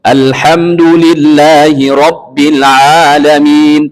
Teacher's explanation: Ain makhrajnya wasatal halq, di tengah-tengah tenggorokan kita.